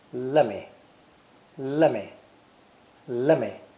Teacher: let me when spoken quickly changes to lemme